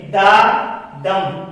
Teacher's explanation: ये यहाँ पर एग्जांपल है दा दम, ये जो आपको बीच में स्लैश नजर आ रही है, ये 2 साउंड्स हैं या 2 सिलेबल्स हैं, एक है दा और एक है दम। अब जो दा है वो उस पर स्ट्रेस नहीं दिया गया है, सही है, वो अनस्ट्रेस्ड है, और दम जो है वो स्ट्रेस्ड है